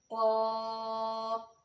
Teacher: लसानी मखारिज में सबसे पहले हरूफ लहविया क़ाफ, ज़बान की जड़ और तालु के नर्म हिस्सा से अदा होते हैं